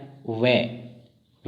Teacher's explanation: वे का उच्चारण स्थान दंत, ओष्ठ। और इन्हें उच्चारण स्थान के अनुसार नाम दे दिया गया दंतोष्ठे।